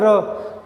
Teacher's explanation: लुंठित क्या होता है, जैसे कि आप लोग र बोलोगे ना, र, तो आपकी जीभ जो है र, तो जीभ उठेगी, ऊपर तालू पे लगेगी और 3 बार टप टप टप ऐसे लगती है, तो उसे बोलते हैं लुंठित होना। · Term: लुंठित व्यंजन